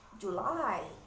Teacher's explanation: Jadi yang ditekan adalah suku kata kedua.